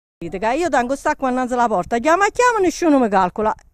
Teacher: all the words are pronounced with the final vowel instead of the schwa sound, and the sounds shk and shp found in traditional Neapolitan are pronounced sk and sp.